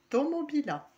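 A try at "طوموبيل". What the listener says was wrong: Parfait.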